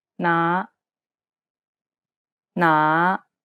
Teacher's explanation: it starts low and then Rises to the middle of your range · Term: fifth tone